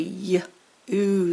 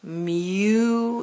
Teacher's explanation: Sometimes long U is two sounds. The Y, Y, plus the U. Kind of get a Y, oo sound.